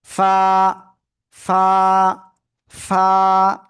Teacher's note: নিচে ঠোঁটের পেট উপরের দুই দাঁতের আগার সাথে লাগিয়ে এক আলিফ টানে উচ্চারণ করব।